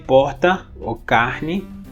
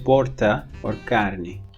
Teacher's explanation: The rhotic in all of these is pronounced like a flap again. If it's syllable final before a consonant, you can pronounce it either as ha or as a flap.